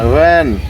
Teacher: উপরের দাঁত আর নিচের ঠোঁট এক জায়গায় হয়ে উচ্চারিত হবে ভ্যান।